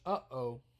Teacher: a glottal stop separates these sounds into 2. Uh-oh, you're slicing it with your throat.